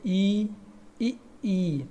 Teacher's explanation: छोटी ई और बड़ी ई इनका होता है तालव्य से तालव्य मींस क्या होता है तालू के प्रयोग से ई इ